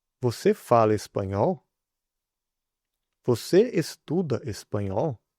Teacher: And for a question, just raise intonation at the end of a positive sentence